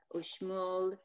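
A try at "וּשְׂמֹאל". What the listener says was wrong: Usmol. It's a sin. Usmol.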